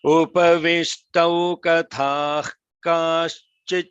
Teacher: That visarga is said in combination with the ka, right? So that's why the ka has a longer holding.